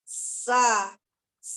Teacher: Dari ujung lidah dengan antara gigi atas seri ini dan gigi bawah. Nampakkan dulu safir ketika mengucapkan sin itu.